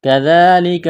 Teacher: زال کو پڑھتے وقت زبان تھوڑی سی باہر نکالیں گے، کڑا زبر ہے، الف کے برابر کھینچنا ہے، اس کاف کو باریک کرنا ہے، اس یا میں سختی کریں گے، دبائیں گے تشدید کی وجہ سے۔